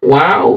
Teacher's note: Makhrajnya bibir atas bertemu dengan bibir bawah dalam keadaan wow.